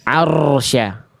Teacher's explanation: Oke, roh sukunnya, Bunda perhatikan baik-baik. Roh sukun itu memang dia tidak boleh bergetar terlalu banyak.